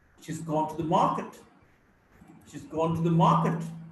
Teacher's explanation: Gone is a verb. Market is a noun. So only one syllable will be stressed, ma. The she has become shiz. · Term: sentence stress